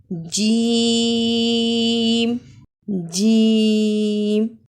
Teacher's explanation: जीम के अदा के वक्त तीन से पांच अलिफ के बराबर खींचते हैं